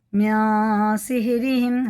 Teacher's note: اس کو ایک الف کے برابر ناک میں لے جا کے چھپا کے پڑھنا ہوتا ہے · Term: غنہ اور اخفا